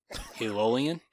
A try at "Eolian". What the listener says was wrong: Eolian. You're saying it like ELOL, but it's EOL.